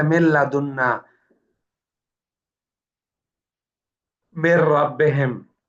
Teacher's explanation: البتہ حروف یمون اس میں جو ہے یا میم واو نون، اس میں ادغام اور غنہ دونوں ہوں گے. اور جو لام اور را ہے، لام اور را، اس میں ادغام بلا غنہ ہوگا، بغیر غنہ کے